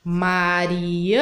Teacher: o ã é a sílaba mais forte do nome da Mariana